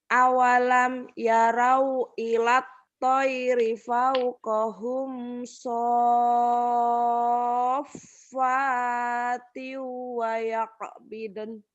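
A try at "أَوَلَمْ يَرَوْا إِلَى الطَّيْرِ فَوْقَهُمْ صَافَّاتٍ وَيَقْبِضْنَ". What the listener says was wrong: Bagus. Tapi di to ini kurang mantep ya. Sama kayak do tadi. Cuman kalau dot itu tadi pipi itu apa gemesin ya. Melendung gitu ya. Kalau to nggak terlalu banyak nih.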